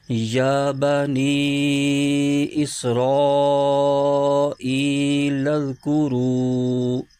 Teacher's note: اب اس کے ہجے یوں کریں گے، یا کھڑا زبر یا، با زبر با، یا با، نون یا زیر نی، یا بنی، حمزہ سین زیر اس، را الف زبر را، اس را، حمزہ یا زیر ای، اسرائی، لام ذال زبر لذ، کاف پیش کو، را واو پیش رو، یا بنی اسرائیل اذکروا۔ تو جہاں مدات آ رہی ہیں اس کو 2.5 الف کی مقدار لمبا کھینچ رہے ہیں